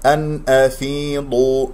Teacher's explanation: ضاد مفخمة مرتبة ثالثة لأنها مضمومة